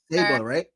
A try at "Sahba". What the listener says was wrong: You're adding a lot of emphasis. Saba, like the car Saab.